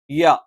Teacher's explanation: യ നാവിന്റെ മധ്യഭാഗം മേലെ അണ്ണാക്കിലാണ്